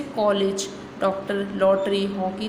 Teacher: यह आ और ओ के बीच की ध्वनि है।